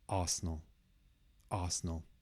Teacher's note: And the stress, the biggest sound, is on the first one.